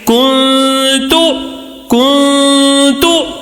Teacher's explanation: ایک الف کے برابر غنہ کر کے پڑھنا ہے